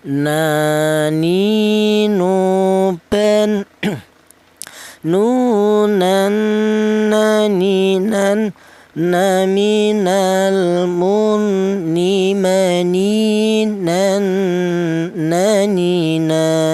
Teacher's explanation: huruf nun ini keluarnya huruf berasal dari ujung lidah menyentuh langit-langit mulut.